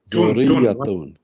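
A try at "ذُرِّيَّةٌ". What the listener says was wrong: Tun. Yes. It's a ta, it's not a tha. Dhurriyatun.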